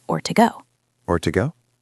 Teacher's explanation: The to reduces to a schwa sound, ta, or even just ta.